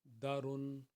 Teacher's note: حروف مدہ جو ہے، اس کی نشانی یہ ہے کہ اس سے پہلے والے حرف کے اوپر زبر ہوتی ہے، اور اس کو دال الف زبر دا، را دو پیش رن، دا رن، دا کو ہم نے دو حرکت کے برابر پڑھنا ہے کیونکہ یہ حروف مدہ ہے